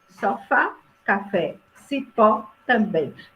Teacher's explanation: A sílaba tônica é sempre a última. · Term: oxítona